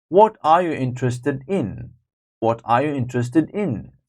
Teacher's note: are you interested in so that's question and in is coming preposition is coming at the end of a sentence so that's stressed